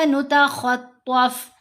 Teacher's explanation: خ اور طا یہ دونوں کو یہاں پر ہم نے موٹا پڑھنا ہے، یہ دونوں حروف مستعلیہ میں سے ہیں۔